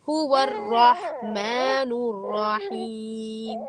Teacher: هو الرحمن میں را موٹا ہے، اور رحمان اور رحیم دونوں میں را موٹا ہے